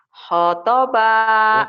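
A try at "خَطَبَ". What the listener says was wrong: Bukan, khonya panjang.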